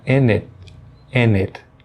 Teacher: Ao pronunciar o and, ela vai suprimir o D e já vai emendar com o it. Ela vai ficar in it.